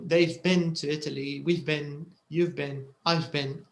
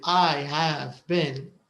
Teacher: it's very rare to hear have it's usually contracted and it's unstressed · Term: short form